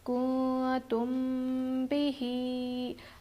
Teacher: میم ساکن کے بعد با آئے تو ہم غنہ اور اخفاء کے ساتھ پڑھیں گے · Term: اخفاء شفوی